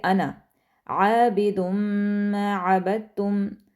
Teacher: جو انا کا ورڈ ہے یہ ایک ایسا ورڈ ہے پورے قرآن میں جہاں جہاں آئے گا آپ نے الف مدہ کو اگنور کر دینا ہے